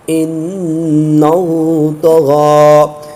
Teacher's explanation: تو غین پر کھڑا زبر ہے تو اس کو ایک الف کا زبر کھینچ کے پڑھیں گے، اور جو کھڑا زبر ہوتا ہے وہ وقف میں تبدیل نہیں ہوتا۔